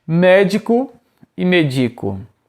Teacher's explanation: a ausência do acento muda a palavra de médico, proparoxítona, para medico, paroxítona